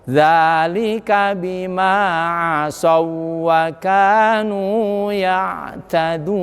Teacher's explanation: Wau dan wau sama makhrajnya, sama sifatnya. Nah, di luar mim ke mim tidak boleh ditahan, tidak boleh ada dengungnya.